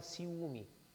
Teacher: O u do ciúme é tônico, é forte, então ele se torna uma vogal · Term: hiato